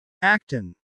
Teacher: the T sound connects smoothly with on